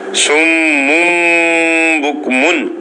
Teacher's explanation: نون ساکن اور تنوین کے بعد با کا حرف آ جائے، با کا، تو پھر نون کو میم سے بدل کر پڑھیں گے. نون کو میم سے بدل پڑھیں گے.